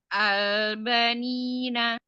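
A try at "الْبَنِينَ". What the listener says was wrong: Banya jangan sempeng. Ba bulat.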